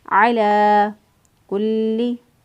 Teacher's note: लाम को मजबूती क़ुव्वत से अदा किया क्योंकि उसके ऊपर शद है